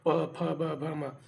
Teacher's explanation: प वर्ग में ओष्ठ, ओठ से, ओठ की सहायता